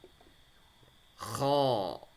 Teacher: Cara membaca tebal bukan mencucu mulutnya ya, tapi lidah yang di bagian belakang itu kita naikkan dan agak ke depan dikit kita turunkan. Jadi terdengar suara tebal. Tapi mulutnya tidak mencucu.